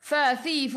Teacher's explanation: gigi atas menyentuh perut bibir bawah. Sifat huruf fa hamas kena ada angin.